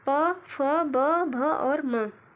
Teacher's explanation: ओष्ठ व्यंजन वह व्यंजन होता है जो दोनों ओष्ठों द्वारा श्वास का अवरोध होता है, यानी कि जब हम बोलते हैं तो वहाँ पे रुकावट होती है, इसी को हम ओष्ठ व्यंजन के नाम से जानते हैं।